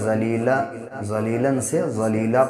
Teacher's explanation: جب یہاں پر وقف کریں گے تو ایک زبر گرا کے ایک زبر کے ساتھ الف پڑھیں گے